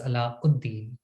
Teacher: Without going into details of Arabic grammar, let me simply note for those unfamiliar with the language that while you would write the name in question as ʿAlaʻ al-Din, when you read it, it is always read as Alauddin. For these combination of words, the definitive article al is voiced as ud.